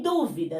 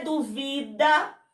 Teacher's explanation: Ó, dúvidas é proparoxítona. Duvida é paroxítona.